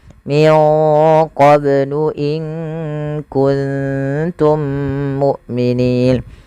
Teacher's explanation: lafal Mim bertemu mim adanya dua mim yang saling berdekatan maka cara membacanya mim yang satunya dimasukkan kepada mim yang kedua dan ditahan suara mimnya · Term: Idgham mim